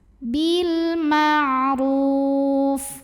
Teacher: alif lam yang menghadapi huruf qamariyah yaitu mim, maka lam sukun dibaca izhar atau jelas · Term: alif lam qamariyah